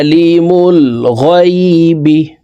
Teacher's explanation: আইনকে হলকের মধ্যখান থেকে উচ্চারণ করব